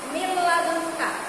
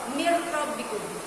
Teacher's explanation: nun sukun bertemu dengan la, dimasukkan, ya, tidak berdengung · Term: idgham bi la gunnah